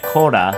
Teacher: In Japanese, instead of pronouncing the la sound, which is just non-existent in the sound structure, we change that to the ra sound. So when we use cola and we turn that into Japanese, we simply get kora.